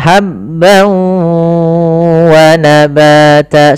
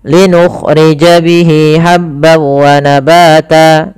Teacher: Linukhrija bihi habban wa, ha kecil, hati-hati jangan sampai dibaca habbau, tapi habban wa, tanwin bertemu waw sebagaimana yang tadi, yaitu idgham bi gunnah. Langkah pertama masukkan tanwinnya ke waw, hilang suara nunnya menjadi suara waw, kemudian ditahan gunnahnya. Maka habban wa nabata sepanjang 2 harakat lebih sedikit.